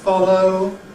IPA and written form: ˈfɒləʊ (follow)